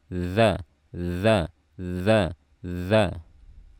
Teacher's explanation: Ayat berikutnya ada zal, makhrajnya ujung lidah bertemu dengan ujung gigi seri atas, dan ini sifatnya rokhwa, bukan syiddah. Jadi saat melepaskan makhrajnya dan mengeluarkan suara jangan berbarengan, tapi alirkan suaranya terlebih dahulu.